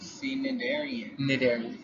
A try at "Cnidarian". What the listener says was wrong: The C is silent. You know, like you don't say knife, you say knife. This makes a U sound.